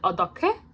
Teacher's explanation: the hyut sound is making the giok sound more like k instead of g